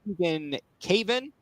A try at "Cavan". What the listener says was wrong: Yes, you had the wrong syllable.